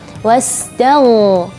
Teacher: ketika melafalkan huruf ghain, khususnya ketika sukun, kita ada agak sedikit menarik huruf ghain. Wastaghna, seperti itu.